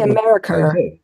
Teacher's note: putting an R at the end of an A vowel, like America, that's quite British.